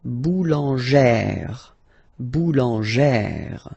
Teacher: plus this accent grave, you pronounce it like E, really open E sound.